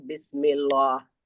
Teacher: हमें बिस्मिल्लाह के लफ्ज अल्लाह को बारीक पढ़ना